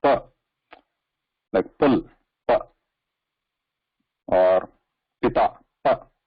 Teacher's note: So to say pa, the lips have to close. So there is a closure or touch to stop the air. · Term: labials